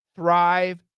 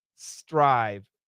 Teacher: The TH, the tongue's got to be between the teeth. The S, the tongue needs to be behind the teeth.